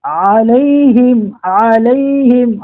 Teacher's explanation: عین کا مخرج یہ ہے کہ یہ عین حلق کے درمیانی حصے سے ہی نکلتا ہے